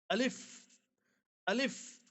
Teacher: अलिफ का मखर है मुह के अंदर का खाली हिस्सा